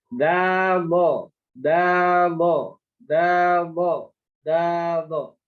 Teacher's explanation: naiknya pangkal lidah dan tengah lidah pada huruf do dan pada huruf da turun